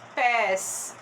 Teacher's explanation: se fosse um agudo ficaria pés porque tem um som mais aberto